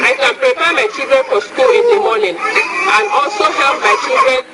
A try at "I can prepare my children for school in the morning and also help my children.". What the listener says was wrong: Now one thing, excuse me, you can also work on your intonation. You want to work on varying your tone more than you're doing. Try to speak a little more naturally. I tell people if you can speak with a smile, try to do that sometime. That might help you with your tone.